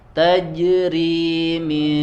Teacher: ro-nya di sini harokat kasroh, maka dibaca tipis